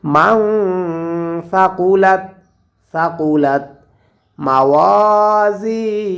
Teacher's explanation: এখানে গুণনা করব নুন সাকিনের পরে ইখফার হরফ সা আসার কারণে